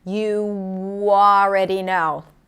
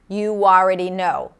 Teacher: The W sneaks in to help me connect the oo sound with the ah sound. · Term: intrusive sounds